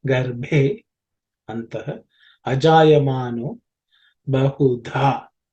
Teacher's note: The dha is the fourth letter in the tha varga, so it has to be aspirated